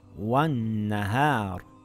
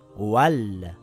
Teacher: We know now it's a sun letter. So the lam becomes silent and we read it as wan-nahar and not wal-nahar